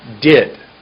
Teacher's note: My tongue goes up behind my teeth for did. I can see above my teeth.